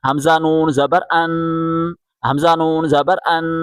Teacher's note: حمزہ کو نون کے ساتھ ملائیں اور یہاں غنہ کریں